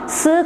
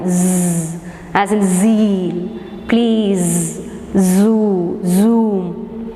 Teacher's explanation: the S sound s consonant and it's voiced companion Z